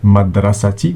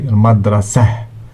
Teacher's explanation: when ta marbuta is at the end of the word, we don't pronounce it. We don't say madrasati, we say madrasah.